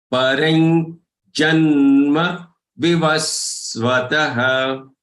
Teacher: Here, take the second charan, parai. The anuswar on the ra has to be pronounced as nya, because the following letter is of cha varga.